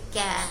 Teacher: they will delete the last sound, last consonant of the word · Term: final consonant deletion